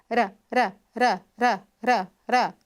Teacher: Modo de articulação TEP, obstrução total e rápida. É uma batida da língua. Então, quando nós fazemos a consoante R, R r, essa encostadinha, essa batida da língua rapidinho, ela é considerada como uma como um modo de articulação TEP.